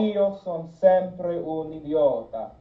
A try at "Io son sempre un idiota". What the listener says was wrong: Yes, and pull back a lot more on the o. Io. It's a hint.